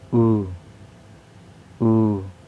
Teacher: There is high back rounded tense vowel, and the example words are you, to